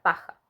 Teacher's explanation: ejemplo de esto es en la palabra paja el fonema pop presenta un cierre de los labios que al separarse bruscamente dejan salir el aire por lo tanto es una consonante oclusiva